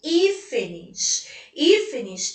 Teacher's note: sendo que eu tenho três sílabas e alta intensidade caiu na antepenúltima sílaba